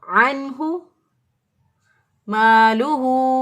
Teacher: हा जो है नून साकिन के बाद हा आ गया, ये जो है हा ये अक्सा हरक से अदा होता है, तो इजहार करेंगे, नून साकिन की आवाज़ को ज़ाहिर करेंगे, इसलिए हमने इसको पढ़ा अन्हु मालूहु।